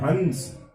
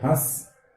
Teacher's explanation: हंस में पूरी नाक से ध्वनि निकल रही है, और हंस इसमें नाक से निकल रही है लेकिन हल्की ध्वनि निकल रही है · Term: अनुस्वार